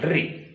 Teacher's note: जिह्वा का अग्रभाग जो नोक है जिह्वा की, वह दांत के पास लहरा रही